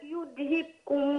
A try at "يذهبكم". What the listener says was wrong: لا يقول يذهبكم. القلقلة اللي في الباء. يذهب يذهبكم. بص يذهب يذهبكم.